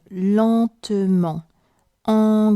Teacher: the air goes through your nose mainly but this time with your mouth you do the shape of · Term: nasal sounds